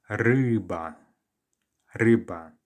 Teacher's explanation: your starting point can be ryba, as if you did have that I sound in English, ryba, but then pull your tongue backwards, ryba, ryba. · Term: U sound